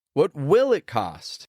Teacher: When you emphasize the auxiliary verb, you're adding extra curiosity. You're saying, I really want to know.